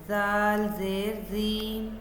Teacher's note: ज़ुबान की नोक को ऊपर के सामने वाले दांतों के किनारे के साथ लगाकर नरमी से अदा किया जाता है